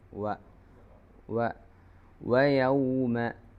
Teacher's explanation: വ എന്ന അക്ഷരം പറയുമ്പോൾ ചുണ്ട് കൂറിപ്പിച്ചിട്ട് ഇഷ്മാം ചെയ്ത് പറയണം